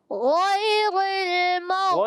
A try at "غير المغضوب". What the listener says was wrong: غیر را کو باریک رکھیں گے. اور مد کو آپ نے پورا اور کھینچنا ہے.